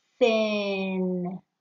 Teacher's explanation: when making this sound you place your tongue between your upper and lower teeth teeth tongue teeth just like bread meat bread when making the · and lower teeth teeth tongue teeth just like bread meat bread when making the sound your voice is off it's the quiet th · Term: tongue sandwich